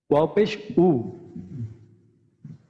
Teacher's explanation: ওয়াওয়ের উচ্চারণ আমরা জানি যে ওয়াওয়ের মাখরাজ হচ্ছে আমাদের দুই ঠোঁটের মাঝখান থেকে আমাদের উচ্চারিত হচ্ছে ওয়া। তো ওয়াও পেশ উ, এখানে দুই ঠোঁটের মাঝখান থেকে এটা উচ্চারণটা আসতে হবে।